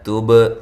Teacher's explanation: تا کو باریک با پہ قلقلہ